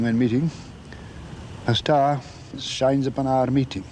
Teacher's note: A little trilled R in there.